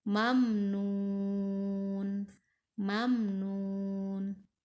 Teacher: mim mati menghadapi Nun jadi harus dijelaskan harus dibaca jelas